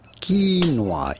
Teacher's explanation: You do want to stress on the first syllable rather than the second one.